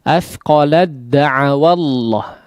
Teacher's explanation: Athqalad ya, langsung masuk kepada huruf dalnya. Nah, tidak dibaca sama sekali huruf ta-nya atau tidak dianggap ya, karena melebur secara sempurna masuk kepada huruf dal